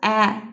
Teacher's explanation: Ə deyərkən dilimiz önə gəlir, həqiqətən də incədir.